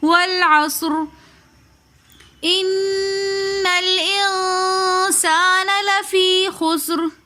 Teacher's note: ان میں نون مشدد ہونے کی وجہ سے ہم غنہ کریں گے، پھر نون مشدد کو آگے ہم لام ساکن کے ساتھ ملا کر پڑھیں گے۔